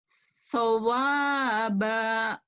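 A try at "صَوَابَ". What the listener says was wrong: Pendek. Panjang tengahnya dong.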